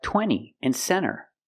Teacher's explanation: when you have n t between vowels you don't really hear the T